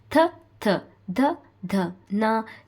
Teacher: ಹಲ್ಲುಗಳ ಸಹಾಯದಿಂದ ಉಚ್ಚರಿಸುವ ಅಕ್ಷರಗಳಿಗೆ ಅದಕ್ಕೋಸ್ಕರ ಇದನ್ನ ದಂತ್ಯ ವರ್ಣ ದಂತ್ಯ ವರ್ಣ ನೋಡಿ ಥ ಥ ದ ದ ನ ಇದು ಉಚ್ಚಾರಣೆ ಮಾಡಬೇಕು